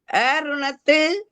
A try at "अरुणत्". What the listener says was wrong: फिर इसमें हमेशा गलती करते हो, अरुणत है तो हलंत है कि पूरा है? लग रहा था ना, तो है नहीं ना, यहाँ हलंत है।